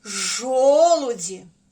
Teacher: наголос ставимо на перший склад жо на звук о